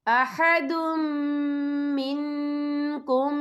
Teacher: یہ دیکھیں احدم، دال کے اوپر تنوین ہے، تنوین کے بعد جو ہے میم آ رہا ہے، اور میم جو ہے حروف ملون میں سے ہے تو یہاں پر ادغام ہوگا، تو ہم اسے غنّے کے ساتھ پڑھیں گے